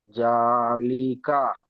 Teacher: খাড়া জাবারকে একালিপ টেনে পড়তে হয়